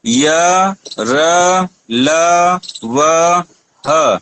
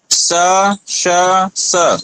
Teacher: य र ल व ह अंदर अंदर गुंजायमान हो रहा है, लेकिन स श स वो घोष नहीं हो रहा है अंदर